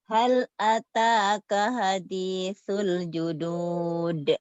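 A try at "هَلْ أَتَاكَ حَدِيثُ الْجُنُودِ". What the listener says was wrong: Terus beda H gede sama H kecilnya bias tuh. Harusnya gini. Hal. H gede latihannya alhaakumut. Alhaakumut. Beda kan? Alhaakumut. Kalau A kecil, alhamdulillah. Alhamdulillahirabbil alamin. Ar-Rahman. Ha. H ya.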